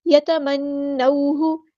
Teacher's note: یہاں پہ نون مشدد تشدید والا ہے تو غنہ زمانی ہوگا، اور واو ساکن سے پہلے زبر ہے تو مد لین، یہاں پر مد لین ہوگی، یہ واو لین ہے.